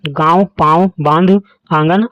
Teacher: इसके उच्चारण के समय हवा, मुंह और नाक दोनों से निकलती है। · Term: चंद्रबिंदु